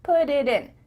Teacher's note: the time to let the air come out of your mouth your tongue is just tapping the top of your mouth